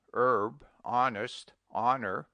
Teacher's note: Omit the H in air, aerys, herb, honest, honor, osler, our humor, and also in their derivatives. The H should never be sounded when it does not exist.